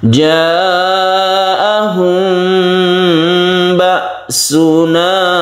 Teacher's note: Ja'ahum ba'suna, aslinya yang betul itu mim mati bertemu dengan ba ini kita tidak terlalu mingkem ya, tidak terlalu mingkem. Tapi mingkem pun itu juga tidak masalah. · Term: ikhfa syafawi